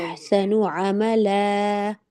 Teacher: अहसनु अमला, ला पे थोड़ा टाइम लगेगा, 2 सेकंड और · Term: मद्दे असली